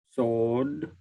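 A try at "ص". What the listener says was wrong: Okay. So make it heavier. Sword. Sword.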